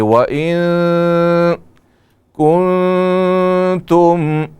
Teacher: یہاں نون ساکن ہے اور اس کے بعد حروف اخفاء میں سے کاف ہے، تو نون میں اخفاء کریں گے